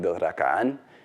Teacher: stressed on the last syllable